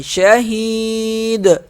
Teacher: وقف شہید، شہید. دال پہ قلقلہ کر رہے ہیں، شہید وقف کی صورت میں.